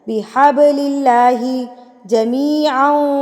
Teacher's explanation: با پہ جب یہ جزم کی علامت آتی ہے تو با پہ قلقلہ کیا جاتا ہے، یعنی کہ اس کو ہلا کے پڑھا جاتا ہے